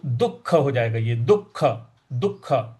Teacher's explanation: देखिए दु के आगे विसर्ग बनाया हुआ है और उसके आगे ख लिखा हुआ है, तो जो विसर्ग है उसका भी उच्चारण ख ही होगा